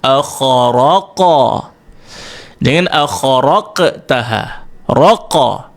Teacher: Dan tak perlu nak menekan bunyi akharaqtaha, tak payah. Sebab sifat daripada huruf qaf kat sini, syiddahnya itu lemah, tertahan sebelum kita lantun. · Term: qalqalah